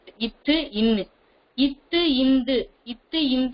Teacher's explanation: மேல்வாய்ப்பல்லின் அடியை நாக்கின் நுனி பொருந்துவதால் பிறக்கின்றன